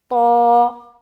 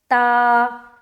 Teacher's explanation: مستعلیہ یعنی کہ موٹا ہونا، اور اس کے اندر موٹے پن کی صفت پائی جاتی ہے، موٹا پن ہوتا ہے، بولڈ ریڈ کرتے ہیں، گول بنا کر پڑھتے ہیں